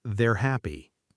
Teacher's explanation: Weak form often sounds like were with almost no vowel at all. They were happy can sound like they're happy.